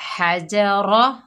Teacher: हा को हलक के दरमियान से अदा करेंगे। हजरा, रा पुर पड़ी जाएगी।